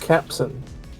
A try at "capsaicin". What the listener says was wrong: Capsaicin. There's a lot more words, or a lot more letters in there than just capsin.